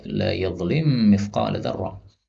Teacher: mim ketemu mim boleh dibaca dengan idgham